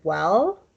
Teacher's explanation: that is like the l in the english word well that is a velarized l it's kind of a dark l